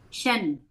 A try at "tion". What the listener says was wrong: Chen or Tion? Is it Shen or Tion? Isolated, it's Tion. It is not Shen.